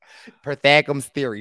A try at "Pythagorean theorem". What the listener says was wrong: you're missing some syllables. Pythagorean? Pythagorean theorem.